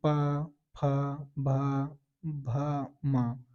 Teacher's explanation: तो इसमें हम मेरे ओठ आपस में मिलते हैं · है कि यह शब्द बोलते वक्त मेरे ठ दोनों मिल जाए दोनों ओठों का स्पर्श होना ही हम उष्ट वर्ग बोलते हैं